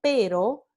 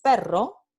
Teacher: la vibrante simple y la vibrante múltiple